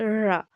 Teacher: तो रा का जब हम उच्चारण करते हैं तो हमारी जो जीभ है वो आगे से क्या होती है? मुड़ जाती है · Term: लुंठित